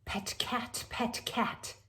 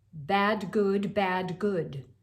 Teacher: notice you're using all the unvoiced and then the voiced plosives